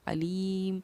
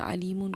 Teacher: حکیم علیم، لیکن وقف کی وجہ سے ہم نے اس کو پڑھا ہے علیم، کیونکہ 2 پیش پر جب ہم وقف کرتے ہیں تو وہاں پر ہم جزم دے کر سانس توڑتے ہیں